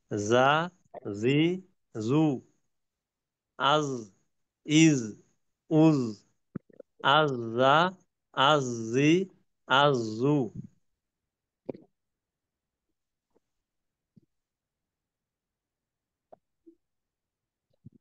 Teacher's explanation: আর জায়ের ক্ষেত্রে একেবারে দুই দাঁতের পেটের সঙ্গে স্পর্শ হইবে। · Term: জায়ের উচ্চারণ